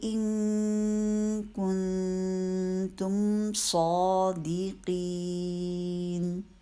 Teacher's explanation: نون ساکن کا یہاں اخفاء کا رول ہو رہا ہے. نون ساکن کے بعد کاف آ گیا ہے. کاف کے مخرج کے قریب جا کے نون کی آواز کو چھپائیں گے غنہ کرتے ہوئے